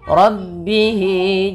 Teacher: Maka di sini biasanya ditandai dengan ada tanda yang seperti ini berbentuk ya kecil. Maka dia kita namakan dengan mad silah qasira dipanjangkan 2 harakat.